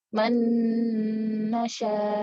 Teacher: Jadi maksudnya kita masukkan langsung dengan nun. Jadi kita gabungkan nun yang pertama dengan nun kedua secara langsung. Jadi seakan-akan nunnya cuma satu. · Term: idgham